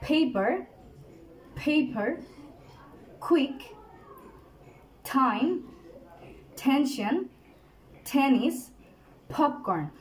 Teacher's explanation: সবগুলো ওয়ার্ডেই কিন্তু দেখা যাচ্ছে যে পেপারটা মুভ করছে, কারণ এখানে বাতাসের একটা প্রেশার ক্রিয়েট হচ্ছে